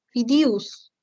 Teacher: Alternancia vocálica de E con I y de O con U. Por ejemplo, en lugar de decir fideos, fidius, ¿no?